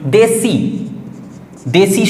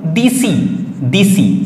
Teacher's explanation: যেমন ধরো বলা হলো দেশি, দেশি শব্দটা ছিল, হয়ে গেল দিসি, দিসি। দেখো প্রথমের একারটা ছিল, হয়ে গেল ইকার, পরে ইকার ছিল, ইকারটা থাকলো। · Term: পরাগত স্বরসঙ্গতি